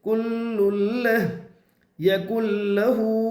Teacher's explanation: लाम के ऊपर 2 पेश की तनवीन है, तनवीन के बाद लाम रो में से लाम है, इसलिए तनवीन को लाम से मिलाकर बगैर गुन्ना के पढ़ेंगे, इसको इदगाम ताम कहते हैं।